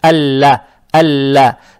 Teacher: Фатху произносим мягко, как есть. Далее стоит буква лам, она же удваивается. Здесь фатха, фатха приобретает оттенок я